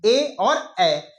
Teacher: तालू जो हमारे ऊपर नीचे का मुख हिस्सा होता है वहां से भी आते हैं और कंठ से भी इनकी आवाज आती है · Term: कंठ तालव्य स्वर